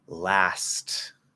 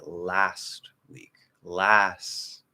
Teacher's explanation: I could make that T, even though it's at the end of the word, which is the least likely place to have a strong aspirated T sound. Even in that place, I could make it a strong T.